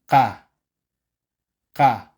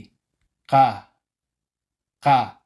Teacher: letter sang hyok ka ka patigas ang pagbigkas hindi ka ka dapat walang hangin sa pagitan ng K at a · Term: tense consonants